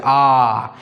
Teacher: উচ্চারণ করছি সবথেকে বেশি কিন্তু ঠোঁটটা খোলা আছে আ তাই একে আ কে বলা হয় বিবৃত স্বরধ্বনি সবচেয়ে বেশি খোলা থাকে আর এ আর ও কে বলা হয় অর্ধবিবৃত মানে পুরো বিবৃত